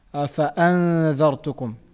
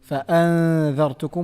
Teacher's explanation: But when it comes to some other examples like فَأَنذَرْتُكُمْ, the noon here, فَأَنذَرْتُكُمْ, we applied the gunna. At the same time, we hid the pronunciation of noon. We did not say fa'an, we did not pronounce the noon clearly.